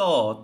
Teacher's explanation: দাঁতের গোড়ায় টাচ করে জিহ্বাটা এসে